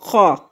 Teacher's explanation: خا حلق کے اوپر والے حصے سے ادا ہوتا ہے